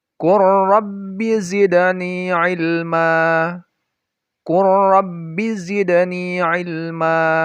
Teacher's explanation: lam sukun itu dibaca idgham atau memasukkan dari lamnya ke huruf berikutnya. Nah, ini terjadi jika lam sukun itu bertemu dengan huruf ra dan lam.